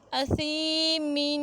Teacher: حمزہ زبر آ، سین زیر یا ساکن سی، اسی، میم دو زیر من، اسیمن۔ سی حروف مدہ ہے تو ایک الف کی مقدار تک لمبا کر کے پڑھیں گے